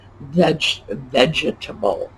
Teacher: It's vegetable. We do not pronounce that middle syllable.